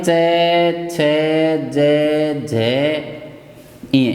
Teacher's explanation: तालु से। आदि वर्णों का उच्चारण तालु से होता है।